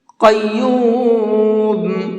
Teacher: یہاں پر یہ بڑا قاف ہے، اس کو منہ بھر کے پڑھیں گے